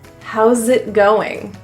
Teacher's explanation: The S in house will actually be pronounced as a Z, which links to the next word. It will sound like you're saying zit.